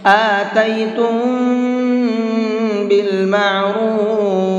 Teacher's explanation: آتیتم بالمعروف، تم یہاں پر بھی غنہ کریں گے، اس لیے کہ یہاں پر میم ساکن کے بعد میں با ہے، اور میم ساکن کے بعد میں با آتا ہے تو وہاں پر غنہ اور اخفا دونوں کر کے پڑھتے ہیں